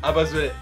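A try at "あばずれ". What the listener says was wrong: Alors, en japonais, il n'y a pas de U.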